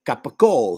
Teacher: eliminating the final syllable of each item